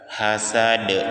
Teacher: huruf terakhirnya huruf dal itu huruf qalqalah, maka suara kita dipantulkan